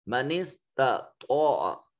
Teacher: پہلی تا کو باریک اور دوسری تا کو مفخم یعنی موٹا کر کے پڑھا جائے گا صفت استعلاء ہونے کی وجہ سے